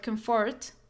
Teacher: the word comfort the stress on the first syllable